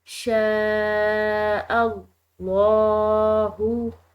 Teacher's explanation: شین کے بعد الف پر بڑی مد ہے، تو بڑی مد جو ہے اس کو کھنچاؤ کے ساتھ پڑھا جاتا ہے، یعنی کہ اس کو لمبا کر کے کھینچ کر پڑھا جاتا ہے، اور یہ لمبا پڑھنا 3 الف کے برابر، ٹھیک ہے.